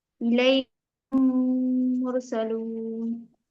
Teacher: جی ادغام شفوی میں میم ساکن کے بعد دوسرا میم آئے گا تو میم کو میم سے ملائیں گے اور غنہ کریں گے